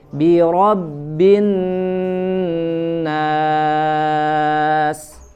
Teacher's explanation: bi kasroh dibaca tipis, kemudian ro ya tebal, ro bi-nya tidak menjadi tebal juga ya, biro atau menjadi tidak jelas bi-nya, biro bin, tapi bi-nya disempurnakan dulu, bi ya, ditarik atau diturunkan rahangnya, kemudian ro-nya baru tebal.